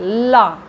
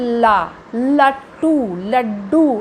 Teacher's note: पार्श्विक व्यंजन, वायु जिह्वा के दोनों ओर से बाहर निकल जाती है। ला, जिह्वा के दोनों ओर से आपने ला बोला, तो जो जीभ थी आपकी तालू और दंत को छू रही थी, और पीछे आप अगल बगल उसे एयर मिल रही है, हवा मिल रही है, वो निकल जा रही है।